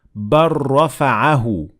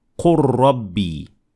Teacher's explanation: In both of these examples, the ra was pronounced and the lam was dropped. So we said بَلْ رَفَعَهُ, and we did not say بَلْ رَفَعَهُ.